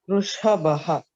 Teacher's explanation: Vrisha is murdhanya shakara. Vrishabha, bha mahaprana.